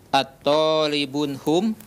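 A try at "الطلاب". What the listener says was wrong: Atullabun. Lamnya ditasdid. Atullabun.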